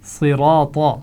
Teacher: صراط، صاد، را اور طا تینوں کی آوازیں موٹی ادا ہوں گی